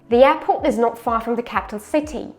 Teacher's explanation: City from city, the main stress. Airport is the secondary stress. Pay attention, we don't say air, it's just air air air.